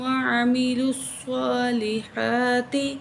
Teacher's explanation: لام کو سواد سے ملائیں گے، سواد کو موٹا کر کے پڑھیں گے اور کھڑی زبر ایک الف کو برابر کھینچیں گے.